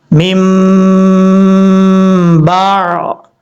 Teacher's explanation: میم کو میم کے ساتھ ملا کے ایک الف کی مقدار غنہ کیا جائے گا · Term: ادغام مثلین